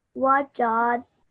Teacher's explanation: you made this jim slightly longer than your ba and the dal